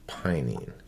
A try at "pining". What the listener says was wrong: You say pining like some people. You have like a hard time doing a hard G. say it sounds like you're saying pining when you say pining. Pining.